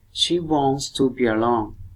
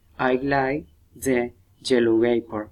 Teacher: we insert an U sound at the beginning of the next word